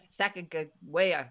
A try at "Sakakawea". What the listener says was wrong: A lot of people say Sacagawea, but the native peoples tend to prefer the pronunciation Sakakawea now, with K's in the spelling.